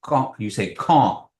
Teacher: And it's nasalized. That AU is nasalized.